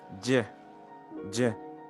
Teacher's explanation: The sound is voiced, and as you can see, you push the air and stop it while you producing it.